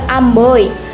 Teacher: ada perubahan kualitas bunyi vokal pertama menuju vokal kedua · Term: diftong